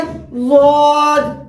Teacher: जबान की जो करवट, वो करवट लेकर जब ऊपर के दाढ़ों की जड़ से लगते हैं तो ज़ुआद की अदायगी होती है। और आप जबान की करवट जो है दोनों तरफ मिलाकर लगाकर आप अदा कर सकते हैं ज़ुआद की मखरज, और दाएं तरफ से मिलाकर भी अदा कर सकते हैं, बाएं तरफ से मिलाकर अदा कर सकते हैं।